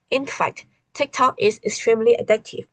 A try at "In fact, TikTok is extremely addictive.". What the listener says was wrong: There was no rhythm in what you said. Let's do it again.